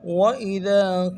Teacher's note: ذال کو باریک ادا کریں گے، ایک الف دار میں کھینچیں گے کیونکہ الف مدہ ہے